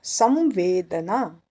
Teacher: स के ऊपर अनुस्वार, आगे आया वेदना का व, तो उसका अनुनासिक होगा व